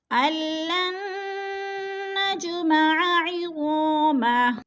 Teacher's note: نج پہ قلقلہ ہو رہا ہے، جیم کو ہلا کر پڑھیں گے · عظامہ، الف خالی سے پہلے غا کے اوپر زبر ہے تو الف مدہ کو 1 الف 2 حرکات کے برابر کھینچ کر پڑھنا ہے